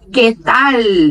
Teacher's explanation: eles pronunciam que tal, com a língua tocando lá no céu da boca